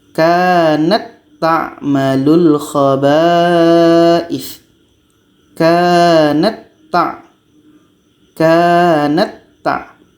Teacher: Jadi bunyi ta yang berangin ini hilang. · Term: idgham mutamatsilain